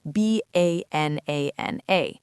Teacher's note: The first and third syllables are reduced to schwa. They become these little throwaway h sounds.